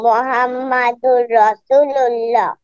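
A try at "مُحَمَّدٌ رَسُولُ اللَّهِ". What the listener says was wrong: মুহাম্মাদুর রসুল্লাহ, সু একটু টেনে বলবে। বলো, মুহাম্মাদুর রসুল্লাহ।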